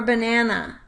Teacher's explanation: “Banana” has a weak-strong-weak pattern